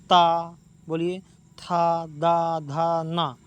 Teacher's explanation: इनके उच्चारण में हमारे जीवा किसको स्पर्श करती है हमारे दांत को यानी इसका उच्चारण स्थान क्या क सकते हैं दंत होता है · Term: ता वर्ग